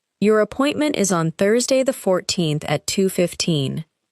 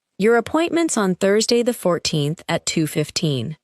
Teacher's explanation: The words appointment is become appointments and on Thursday connect smoothly. However, the numbers remain important and usually receive clear stress.